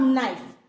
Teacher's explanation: in this knife K is totally silent. We are only using N. So this is not consonant cluster at all because you did not hear the sound of letter K.